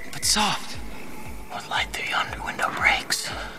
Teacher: iambic meter, which is the repetition of one unstressed and one stressed syllable